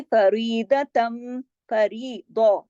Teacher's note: दौत को मोटा पढ़ेंगे, इधर रा बारीक पढ़ा जाएगा, सब बारीक होगा, सिर्फ दो।